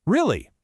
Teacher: And for pure enthusiasm, make it high and fast.